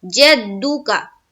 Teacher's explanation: जीम को दाल से मिलाएंगे और दाल को फिर पेश की हरकत के साथ पढ़ना है। जद्दुका। काफ को जबर की हरकत के साथ जद्दुका जल्द अदा करेंगे।